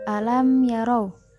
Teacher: Di antaranya pada kalimat alam yarau. Di situ terdapat mim sukun bertemu dengan ya. Maka cara membacanya dengan tidak didengungkan.